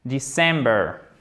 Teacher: December, accent tonique sur la second syllabe.